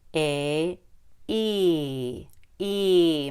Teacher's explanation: make your tongue very high your mouth could be almost closed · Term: long e